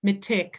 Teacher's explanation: right so the D sound is the more common thing um the harder more Dental kind of T